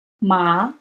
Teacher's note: the second tone is a rising tone. It's almost as if you didn't quite hear what somebody said.